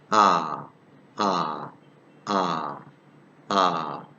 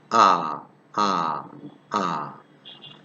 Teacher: This vowel is pronounced with the lips in a completely open and unrounded position. So our lips is completely open.